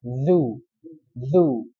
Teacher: Nah, zu makhrajnya di mana? Ujung lidah dengan antara dua gigi seri. Nah, jadi seperti digigit zu dan suaranya itu terseret zu. Nah, qul a'udzu.